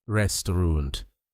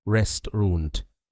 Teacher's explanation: Notice how the middle AU sound disappears.